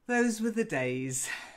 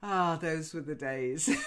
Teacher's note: that particular phrase is a sort of wistful phrase. And you'd say it with a bit of a sigh.